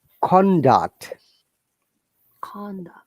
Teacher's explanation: Con. We're stressing on con, then duct is going down.